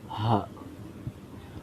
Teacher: Ha ini ada di makhrajnya ada di pangkal tenggorokan. Pangkal tenggorokan ya paling dalam. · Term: huruf ha